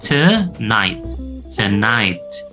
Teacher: Untuk kasus ini, to-nya berubah menjadi te. Kita bisa lihat ada simbol E terbalik kembali ya.